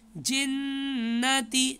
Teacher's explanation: یہاں پر نون مشدد ہے، تشدید ہے، غنہ کریں گے